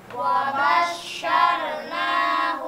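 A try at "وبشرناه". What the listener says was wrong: Orangnya tebalkan. Wabasyarnahu. Bo, bo. Nah, huruf ba jangan ditebalkan. Yang wabo, wabosh, bo, bo. Tapi ba. Wabasyarnahu.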